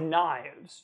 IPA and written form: najvz (Knives)